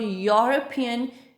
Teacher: whenever we pronounce the word European, beginning sound is the y and it is not the vowel sound